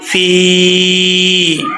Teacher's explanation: اس کو کتنا کھینچیں گے؟ ایک الف کی مقدار لمبا کر کے پڑھیں گے، فا یا زیر فی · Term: یا مدہ